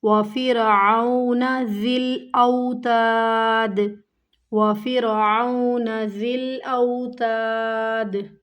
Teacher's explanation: را باریک پڑھی جائے گی